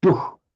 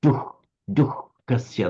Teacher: the visarga before a ka does have a slight h sound